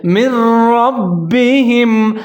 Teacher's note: را کو موٹا پڑھنا ہے آگے با پھر مشدد ہے با کے نیچے زیر ہے را اور با دونوں کو ملا کے پڑھیں گے